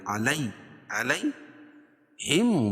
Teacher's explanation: یا ساکن سے پہلے لام کے اوپر زبر ہے تو یا مد، یا لین، اس کو نرم آواز کے ساتھ جلدی ادا کریں گے